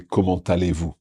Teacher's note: there's only a liaison when we say comment allez-vous?